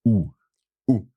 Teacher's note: the tongue is going back a little bit it's not touching the teeth and the lips are forward with a round mouth